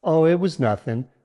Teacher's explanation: The word nothing should sound casual. Use a slight upward intonation on O to make it sound conversational.